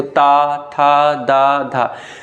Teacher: जिह्वा ऊपर के दांत जो होते हैं उनको स्पर्श करती है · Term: ता वर्ग